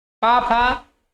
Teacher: पा, फा ये पा वर्ग के हैं, ये पा वर्ग का उच्चारण स्थान ओष्ठ है।